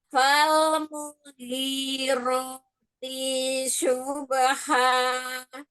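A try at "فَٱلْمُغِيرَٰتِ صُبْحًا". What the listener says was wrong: Naam, ro jangan pakai bibir. Lalu T-nya tidak mat. Fal mughirati subha. Jadi ro-nya enggak enggak ya.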